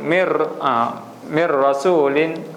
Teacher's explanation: tak perlu dengungkan tak perlu e ni cuma terus sambung sahaja